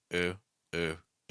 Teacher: the back of your tongue's a little high, and the tip of your tongue is down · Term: oo sound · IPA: /u/